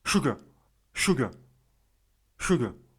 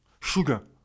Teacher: il y a un R à la fin et le R, il est un peu mangé